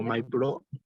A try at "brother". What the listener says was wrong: Bra, no con O, con A, ¿ya? Eso, y TH.